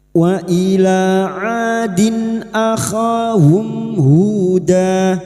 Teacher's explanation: Dan huruf ain, sekali lagi huruf ain jangan samakan dengan hamzah. Huruf ain huruf ain wastul halqi, yaitu tempatnya ada di tengah tenggorokan. Adin kasrat tanwin atau kasrotain pada huruf dal yang bertemu hamzah, idhar halqi. · Adin kasrat tanwin atau kasrotain pada huruf dal yang bertemu hamzah, idhar halqi. Maka bunyi kasrat tanwin dibaca jelas tanpa mendengung. Nun sukun atau tanwin yang bertemu dengan 6 huruf ini, maka bunyi kasrat tanwin dibaca jelas tanpa mendengung, termasuk huruf hamzah.